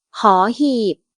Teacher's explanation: Cette consonne donne le son H, un H aspiré en début de syllabe. On ne la trouve jamais en fin de syllabe.